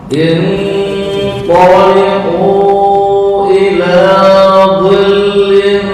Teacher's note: Inṭaliqu Sebentar, intoliku sama nun mati bertemu tok itu adalah ikhfa. Bukan intoliku, enggak. Remang-remang.